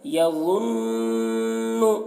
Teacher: یہاں پر دیکھیے نون مشدد ہے تو نون کو ڈبل پڑھ رہے ہیں اور نون میں غنہ بھی کر رہے ہیں